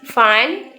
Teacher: suara yang dihasilkan yaitu dengan bibir bawah bersentuhan dengan gigi atas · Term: labiodental